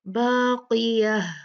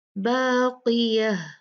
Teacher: ہا ساکنہ میں بدل جائے گا، اس کو ہم کلیئرلی ہا ساکن پڑھیں گے